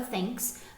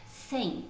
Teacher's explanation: ali a gente tem o som do th não vozeado não vou Zerado porque as cordas vocais não vibram e para